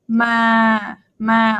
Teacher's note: my tone is pretty kind of i would say boring like flat monotone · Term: mid-tone